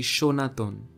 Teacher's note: Bengali has the corresponding letters, but they are all pronounced the same, Sh.